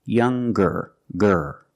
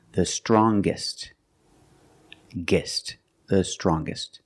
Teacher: we change these adjectives with ER or with est we're going to pronounce the G sound the hard G